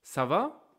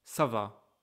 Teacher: You can hear obviously my voice is very high at the end, right?